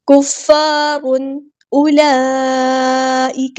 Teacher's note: یہاں پہ ہم نے تشدید کی آواز جو ہے وہ صحیح سے ادا کرنی ہے جماؤں کے ساتھ، ایک بار ساکن کر کے ایک بار اس کی حرکت کے مطابق، کفار۔ یہاں پہ تنوین کی آواز کو ہم ظاہر کریں گے، اظہار ہو رہا ہے، اظہار حلقی، کیونکہ تنوین کے بعد جو ہے وہ ہمارے پاس آیا ہے حمزہ۔